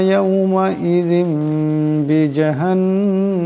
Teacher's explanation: ইয়াউমা ইজিম এখানে জালেনিসে দুই জেরের তনবিন, এরপর বা আসছে, তাই এই জালের দুই জেরের তনবিনকে মিম দিয়ে বদলায় পড়তে হবে, এটাকে কলব বলা হয়। বি জাহান্নাম এখানে নুন মুশাদ্দাদের একারে পরিমাণ গুণনা হবে।